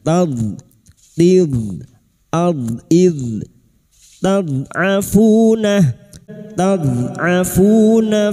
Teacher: Mustad'afuna huruf dod. Dod sukun huruf dod tepi lidah nempel pada gigi gerham atas boleh kiri boleh kanan